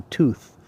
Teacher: you've got an unvoiced th which is just a f right tooth tooth um so that's